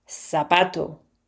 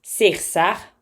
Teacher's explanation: They don't read th, they say s.